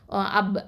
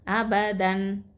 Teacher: உதடுகளை வந்து கொஞ்சம் அழுத்தி சேர்க்கும் போதுதான் இந்த ப உச்சரிப்பு வந்து வெளிப்படுது